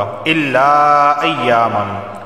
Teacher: الا کے آخر میں الف مدہ اور ایامن کے شروع میں حمزہ آ گیا، مد منفصل واقع ہوگا۔ مرضی ہے 2 یا 3 یا 4 الف کے برابر اسے کھینچ کر پڑھا جا سکتا ہے۔